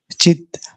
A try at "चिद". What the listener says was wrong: Actually mistake लग रहा है, चित्त नहीं है, वो चिद है। चिद विद हलंत। चित्त मतलब होता है, चित्त नहीं, चिद होता है। सच्चिदानंद, समझ रहे ना। चित्त चिदानंद, चित्त आनंद नहीं है वो। चित्त मतलब होता है मन, चिद मतलब होता है स्पिरिचुअल ज्ञान, स्वयं प्रकाश।